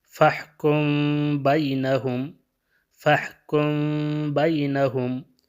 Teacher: فَاحْكُم کا جو میم ہے یہ میم ساکنہ ہے، اور اس کے بعد حرف با آیا ہے تو یہاں پہ میم اخفاء ہو جائے گا